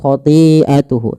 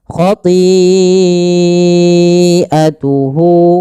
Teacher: Maka apabila ada hamzah datang setelah huruf mad, maka ia dinamakan dengan mad wajib muttasil bila hamzahnya pada satu kata. Maka panjangnya kita panjangkan empat harakat dan tidak boleh dikurangi